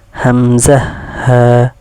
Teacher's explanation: এক নম্বর মাখরজ হলকের শুরু হইতে